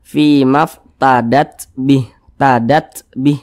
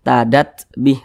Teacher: Nah, kemudian huruf ta juga salah satu huruf yang memiliki sifat hamas. Nah, jadi huruf ta ini kalau dia sukun ya, kalau dia sukun maka ada nafas yang mengalir ketika kita mengucapkannya. Dia seperti percikan alirannya itu.